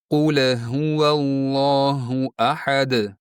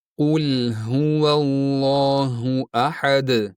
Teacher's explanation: Aslida lam tebratiladigan emas, bir harakat miqdorida ushlanadigan harf.